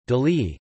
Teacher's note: is pronounced as [ji], with the palatalization of the preceding consonant